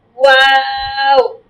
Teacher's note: ফার্স্টে প্রথম হচ্ছে মুখটা গোল করবেন, মাঝে ছেড়ে দিবেন, লাস্টে আবার গোল করবেন।